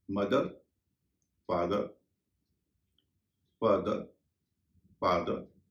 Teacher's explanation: इन सब में टीएच के बाद ई आर है और आप देख रहे होंगे कि टीएच का उच्चारण द हो रहा है